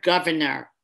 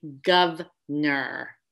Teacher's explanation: there's three syllables but so often you hear someone say gov ner